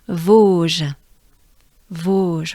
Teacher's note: So the O is sustained, and then we finish. We end up on the je. So we sustain the O.